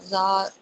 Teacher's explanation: खड़ी हरकत है तो एक अलिफ के बराबर पढ़ेंगे